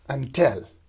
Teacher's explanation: in until, the first syllable is unstressed, while the second syllable till is stressed.